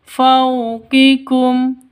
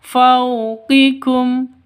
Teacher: Fau sifat lin lentur lemas tidak boleh disentak tidak boleh didengungkan. Fauqikum itu salah yang betul.